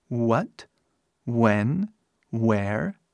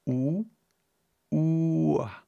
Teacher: é mais fácil pensar isso como som de u que abre para a ua só que faz muito rápido